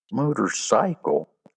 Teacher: Motorcycle has four syllable syllables and the primary stress is on the first and third syllables while the second and third are unstressed.